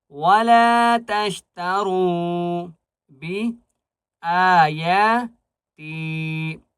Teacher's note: را کو موٹا کریں گے اور را کو ایک الف کی مقدار کھینچ کر پڑھیں گے.